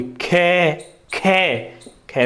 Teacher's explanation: खे, खे, खे में अधिक वायु निकलती है